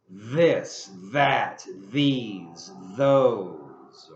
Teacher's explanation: we have the thorn pronunciation, which is the voiced, as in this, that, these, those.